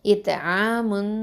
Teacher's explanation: இத்ஆமுன் அப்படின்னு சொல்லி மறைக்கணும், அந்த நூனை ஹைட் பண்ணணும். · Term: எஹ்ஃபா